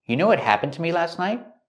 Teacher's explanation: Again, you know what happened to me last night? And the T in night is a stop T.